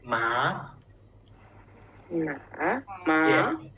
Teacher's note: So then the second tone. Yeah, second tone is from here, the middle. Yeah, from maybe 3 to 5. From 3 to 5. So it's up. It's up. Yeah, we say ma.